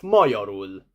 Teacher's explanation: The stress falls on the first syllable